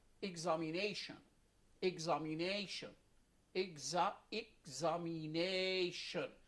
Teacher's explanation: nay here is the longest syllable in the word so it is stressed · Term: stressed syllable